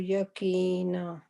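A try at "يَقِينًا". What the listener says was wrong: نا کو اسٹریچ کریں 2 کاؤنٹس. را اسٹریچ نہ ہو آپ کا.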